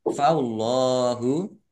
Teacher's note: Allahnya dibaca tebal karena harokat di depannya fathah. Faullahu, lam fathah berdiri, mat tobi'i.